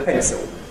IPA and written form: ˈpentso (pencil)